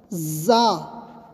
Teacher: جھنجھناہٹ کی آواز سے